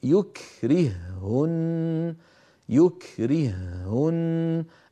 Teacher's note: الرابع والاخير يكرههن يكرههن ايضا الهاء الاولى ساكنه فاضلت في الثانيه فصار النطق بهاء واحده مشدده